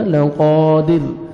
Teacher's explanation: Stop کریں گے, را ساکن ہو جائے گا لقادر. انہ علی رجعہ لقادر.